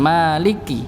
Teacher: kebanyakan dari kita tanpa sadar memasukkan huruf lam ke Kaf Maliki padahal huruf Kaf nya tidak ada tasydidnya